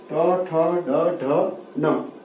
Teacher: इनका उच्चारण स्थल है मूर्धा और मूर्धा से उच्चारित होने के कारण इनको मूर्धन्य ध्वनि कहा जाता है